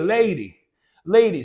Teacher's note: the D is in between two vowel sounds again, gives us this quick flap sound